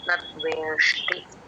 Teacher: నద్వేష్టి అని దీర్ఘం కూడా పెట్టకూడదు